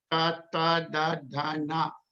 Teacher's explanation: When you say that, it comes from the sound is generated by touching the roof of the mouth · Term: tavarga